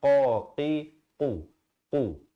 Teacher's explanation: Manakala di sini qaf, makhrajnya di pangkal lidah. Bunyinya qa, qi, qu.